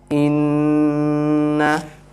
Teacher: whenever noon comes with shadda, we do ghunna there. So we make the noon sound ghunna, nasal sound